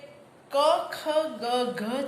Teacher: આપણને એવી ખબર હોવી જોઈએ કે ક ખ ગ ઘ છે એ કંઠ્ય વ્યંજન છે. એવી આપણને કંઠમાંથી ઉચ્ચારાય તે કંઠ્ય વ્યંજન.